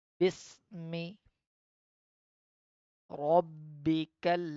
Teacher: Press the ba as it's a qalqala letter. So we read with the stress.